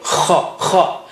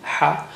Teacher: kha is strong, has a strong airflow